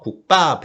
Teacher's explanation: 누가 국밥 이렇게 발음하지 않아요. 국밥 해서 뒤에 초성이 쌍비읍, 비읍이 쌍비읍으로 바뀌죠. 국밥으로 발음이 됩니다. 된소리가 나고 있죠.